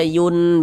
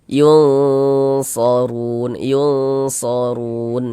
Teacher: Cara membacanya disamarkan kemudian didengungkan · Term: ikhfa hakiki ausat